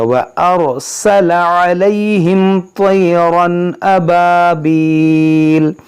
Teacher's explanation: را ساکن سے پہلے زبر ہے تو یہ را موٹا ہوگا